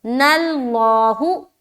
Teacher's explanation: تو نون کو موٹا نہیں کرنا، نل مول مول ایسا نہیں کرنا، نون تو باریک رہے گا۔ نللہ، جیسے لام میں ٹچ ہوگا نا، تو جیسے ہی لام میں ہم کنیکٹ کریں گے، جوائن کریں گے، تو اسی طریقے سے لام فوراً ہی موٹا ہو جائے گا۔